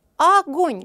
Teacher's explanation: ставлю ударение ударение падает на второй слог